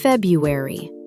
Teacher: The first R is usually dropped in casual speech.